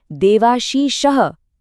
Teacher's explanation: देव का अंत व में छुपे हुए अ से होता है और आशीषः शुरू होता है आ से। फिर से वही सेम पैटर्न है, अ का मिलन हो रहा है आ के साथ।